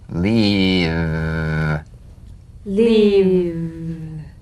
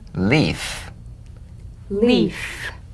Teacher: F v as in leave leave f as in leaf Leaf if you don't have enough vibration in your V's they'll end up sounding like the F · If you don't have enough vibration in your V's, they'll end up sounding like the F because they're exactly the same. One has vocal cord vibration, the other is unvoiced.